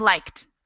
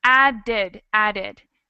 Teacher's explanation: something like liked where we pronounce the ED more like a tea and something like added where we add a whole extra syllable